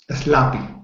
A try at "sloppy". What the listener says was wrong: Great.